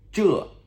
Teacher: Z-H-E, Z-H-E, fourth tone, descending tone